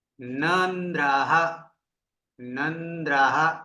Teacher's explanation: નકારને silent કરી દે છે જાણે કે ન ઉચ્ચારણ થતું જ નથી વાસ્તવમાં અડધું થવું જોઈએ